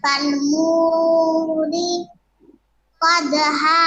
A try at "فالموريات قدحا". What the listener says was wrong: হ্যাঁ আবার বলেন ফালমুরি কদহা ফালমুরিয়াতি না